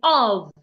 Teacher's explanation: When you have the word of, the F there sounds like a V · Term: V sound